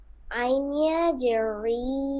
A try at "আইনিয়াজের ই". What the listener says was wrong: আই তো এই ভুলটা হয় আপনার, আইনিয়াজের রি বলবেন কেন? আইনিয়াজের কি হয় আপনি নিজে বলেন। হুম, আইনিয়াজের ই।